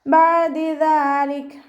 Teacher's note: Okay, ബഅദി ദാലിക് അതിന് കൽക്കലയുടെ ലെറ്ററില്ലാത്തത് കൊണ്ട് half സുക്കൂന് കൊടുക്കുക. ദാലിനെ ലൈറ്റാക്കിയിട്ട് ഉച്ചരിക്കാൻ ശ്രദ്ധിക്കുക കേട്ടോ